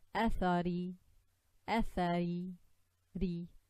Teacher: the Ra comes from the tip of the tongue and it touches just before the gum line of the front two incisors. So Athari, Athari, Ri.